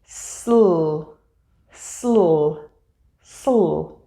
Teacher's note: To correctly form this blend, after finishing your S sound, move quickly into the L sound by separating your teeth a little bit and moving your tongue up to touch the front of the top of your mouth behind your top teeth. Then, quickly release your tongue down as you open your mouth wider.